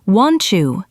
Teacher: The T and Y combine to make a Ch sound. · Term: assimilation